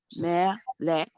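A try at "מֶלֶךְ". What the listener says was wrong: melech. You have to hear that, not a k. You know, guttural. Honestly, anybody who wasn't born saying that vowel, it's hard. letter, it's hard.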